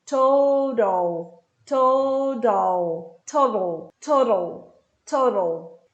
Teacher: O flap T é quando o T vira um som de R, ra, ou um som de D.